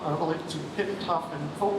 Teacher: But the vocal folds, the vocal cords in your larynx are not yet in the position to start voicing. And so there's a very brief period where the vowel is being articulated, but it's voiceless. And we hear this as aspiration, so a little puff of air.